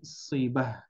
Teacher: Bukan sibat tapi sibah menjadi huruf ha.